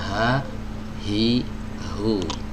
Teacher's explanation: yang betul dia keluar dari al-autar as-sautiyah. Ya, dari pita suara. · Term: huruf H